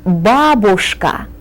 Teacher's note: the accent falls on the first syllable